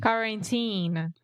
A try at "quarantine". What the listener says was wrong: Okay, the first syllable is where we are having some issues. Yes, the first sound specifically. Sometimes you're saying car, like a car, kaku, but you want to say